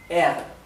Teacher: Recuerden que la R alemana es más gutural que dental.